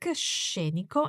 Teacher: watch the sound of this adjective with the emphasis on the first syllable